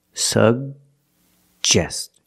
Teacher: the first G is a hard G sound sub and the second G is the J sound like juice and jump